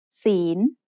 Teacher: is said with a rising tone because it has a high-class consonant with a live syllable ending.